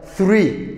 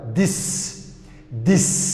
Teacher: marna waa tha oo waxa la leeyahay waa unvoiced marna waa da oo waxa la leeyahay waa voiced